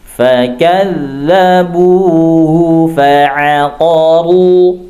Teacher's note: ketika huruf ra berbaris dhamma masih banyak yang terbaca tipis ya padahal harusnya dibaca tebal